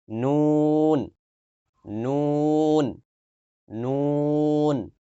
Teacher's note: জিহ্বার আগা তার বরাবর উপরের তালুর সঙ্গে লাগিয়ে উচ্চারিত হয় নুন।